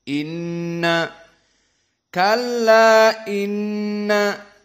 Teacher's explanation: maka nun musyaddadah wujubul gunnah, maka di sini dibaca dalam keadaan dari hidung.